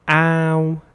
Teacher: in this word the ah sound is very long so you have to prolong the a sound